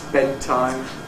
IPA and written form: ˈbedtaɪm (bedtime)